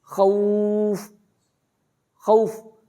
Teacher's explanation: واؤ سے پہلے پیش ہے لیکن اس کو کھینچا جا سکتا ہے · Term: مد